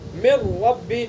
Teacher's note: ہم نے ادغام کیا تو نون کی آواز کو بالکل سائلنٹ کر دیا گیا، حذف کر دیا گیا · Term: ادغام تام